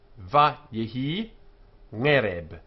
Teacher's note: So the first syllable, va, is unaccented. It ends in a vowel, but it is not a long vowel.